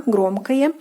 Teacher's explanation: The neuter form is громкое, громкое, ending oye. Take notice that the o in the ending is pronounced more like a